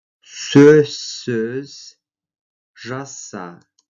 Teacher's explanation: Звук «з» под влиянием последующего звука «с» произносится как «с».